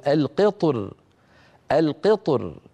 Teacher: الثانيه التي تؤثر في الراء هي ما قبل الطاء وهي الكسره والكسره تشد الراء الى اسفل يعني نحو الترقيق